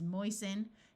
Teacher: OI says oi, so this is moisten. Note that the root is moist, but when we add the suffix, the T sound disappears.